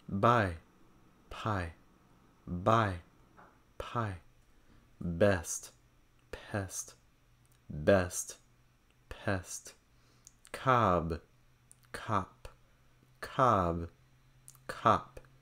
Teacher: Some people confuse the P sound and the B sound, or P, versus B. They have the same mouth position, but the big difference is whether or not it's a voiced sound. The P is voiceless, so when you put your hand on your throat and say P, P, you shouldn't feel anything.